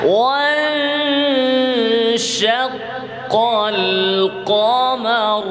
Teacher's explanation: শিনের মাখরাজে জিহ্বাকে রাখেন, জিহ্বার মধ্যখান উপরের তালু।